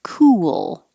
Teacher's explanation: you're making a movement from your lips being rounded ooh to unrounded for the l